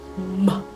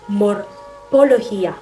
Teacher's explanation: Ginagawa sa pamamagitan ng pagdidiit ng labi at pagpapadaloy ng hangin sa ilong.